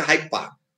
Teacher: So there, that sound, that duh, for instance, that D sound, that gets elided, that gets assimilated, and it becomes Hyde Park. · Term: assimilation